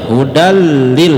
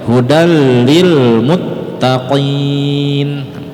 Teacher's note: hudan lil itu namanya idgham bila gunnah, jangan sampai didengungkan. Hudal enggak boleh, langsung dia hudal lil, yang penting nempel saja.